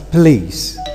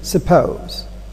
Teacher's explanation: Okay, so we can also talk about the deletion of the schwa before stress syllable